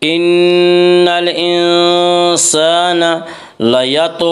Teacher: طا میں قلقلہ ہوگا، طا حروف قلقلہ میں سے ہے۔